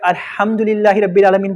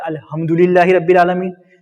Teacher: ایک ہے موٹی ہا، وہ حلق سے نہیں نکلتی، سانس کے ساتھ نہیں آتی، اس کا تلفظ ہوتا ہے ہا۔